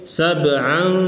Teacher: Ini ikhfa hakiki. Jadi menyamarkan, membuat samar itu tanwin itu dibuat samar nunnya, n-nya itu.